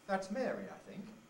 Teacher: you could have two successive tone groups where the first one is a fall and the next one is a rise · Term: afterthought